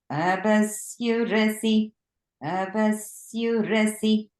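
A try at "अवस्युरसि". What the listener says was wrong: So our swaras are going off a little bit. So if we just look at that one word of asurasi, a and va are both the lower swara. Syu is middle.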